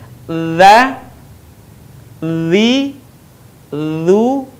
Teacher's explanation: dengan menyentuhkan ujung lidah kita dengan dinding dua gigi seri bagian atas